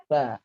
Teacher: Fa, ada angin yang lewat di antara gigi atas dan lidah kita